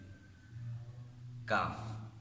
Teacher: اور مخرج نمبر 6 ہے کاف۔ یہ قوف کے مخرج سے متصل ذرا منہ کی طرف زبان اوپر تالو سے ٹکرائے تو اس سے کاف ادا ہوتا ہے